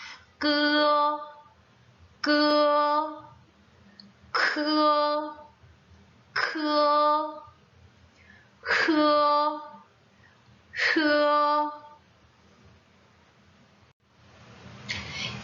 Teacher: 이 혀 뿌리 안쪽에서 천장을 살짝 부딪히면서 나는 소리죠? · 입천장과 혓뿌리 사이로 숨을 내보내면서 소리가 나는 것이 설근음이라고 해요.